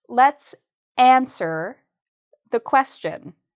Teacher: notice I'm saying the first part louder.